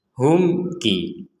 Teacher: di sini ada mim sukun bertemu kaf, kita membacanya dengan jelas. Humki. Jadi dibaca dengan jelas.